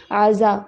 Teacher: وَإِنْ عَزَمُوا الطَّلَاقَ، عین کی آواز پھر ہو، اس کو عزمت نہیں پڑھنا ہے، عزا، اور زا کے اندر سیٹی والی آواز ہونی چاہیے،